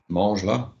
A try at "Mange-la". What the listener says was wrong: Or mange-le, lovely.